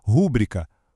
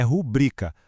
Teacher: Nos dois casos, a força tem que ir pra penúltima sílaba.